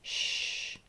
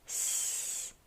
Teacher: SH, your lips are puckered forward. Sh. S, they are stretched back. S. So sh versus s.